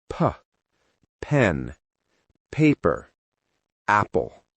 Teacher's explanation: For P, it's a strong air sound.